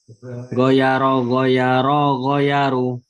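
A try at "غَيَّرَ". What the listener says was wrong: Ulangi, ro-nya yang kelihatan panjang. Ro, kalau tadi jadinya nggak kelihatan panjang.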